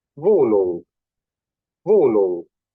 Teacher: Este sonido es el sonido velar nasal